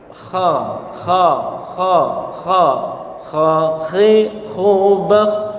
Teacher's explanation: Iya, kha di sini jangan sampai berlebihan. Kha itu tidak sampai seperti buang dahak. Enggak begitu. Tapi pertengahan saja. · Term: huruf kha